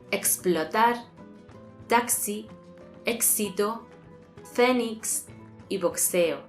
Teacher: esta letra es la suma de los sonidos K y S. Y además, es la única letra que contiene dos sonidos. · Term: K más S